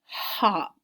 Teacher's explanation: Hop would be the short vowel sound because you hear that ah sound there.